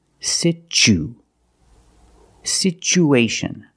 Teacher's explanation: the second syllable is the long u like Boot and moon